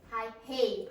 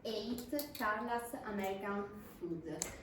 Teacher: you put in a H in front of the vowel